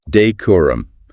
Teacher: clear emphasis on that second syllable core